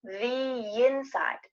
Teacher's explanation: when we have the, we're going to add a little Y sound